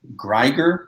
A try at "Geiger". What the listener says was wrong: there's not even an R.